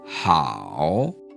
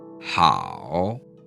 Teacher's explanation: my voice starts relatively low, and then it goes to about where my voice starts to cut out before it rises again just slightly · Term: third tone